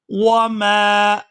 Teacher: یہاں میم کے ساتھ الف مدہ ہے تو اس کو کھینچ کر ادا کریں گے